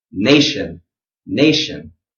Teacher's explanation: So make sure you give that nay, give it a good solid, punch, give it some energy